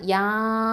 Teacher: மத்தல் வாஜிப் அல் முத்தசிலுங்கிற சட்டத்தின் அடிப்படையில் 4 இல்லைனா 5 அலிஃப் நீட்டி தான் ஓதணும்